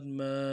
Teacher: میم کھڑا زبر ما، ایک الف کی مقدار میں کھینچنا ہے